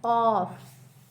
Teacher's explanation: जबान की जड़ और तालू से निकलते हैं